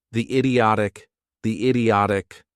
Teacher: I kind of did a link there, but what sound did I make? The idiotic, it's a Y sound.